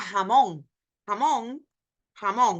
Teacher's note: a little bit of more air coming more friction than the H of hat